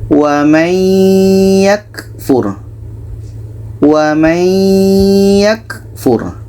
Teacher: Bunyi nun kita masukkan ke ya. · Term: idgham bi gunnah